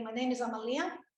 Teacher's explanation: I will have a rise at the end